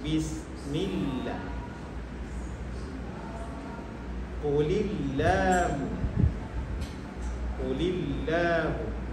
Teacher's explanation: lam lafaz al-jalalah dibaca tarkib, dibaca nipis jika sebelumnya berbaris kasrah, baris bawah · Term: tarqiq